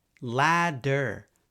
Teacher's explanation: Americans use a tap for the D sound, D, if it's in the same position between stressed and unstressed vowels.